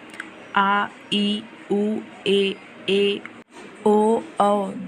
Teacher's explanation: जिन स्वरों के उच्चारण में ह्रस्व स्वर से 2 गुना लगता है उन्हें दीर्घ स्वर कहते हैं